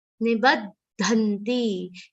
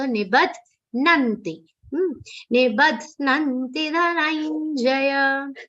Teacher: It's incorrect. Dha is half, na is complete.